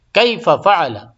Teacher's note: کیف فعل، ہاں دو فا ایک ساتھ آ گیا ہے. کیف فعل، لیکن دونوں فا ایک ساتھ ہونے کے بعد بھی ادغام نہیں ہوگا، الگ الگ پڑھیں گے